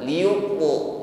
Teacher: bunyi ta ini naik ke langit-langit mulut sehingga bunyi yang keluar atau suara yang keluar ini tebal. Liyuqu bukan liyut. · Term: qalqalah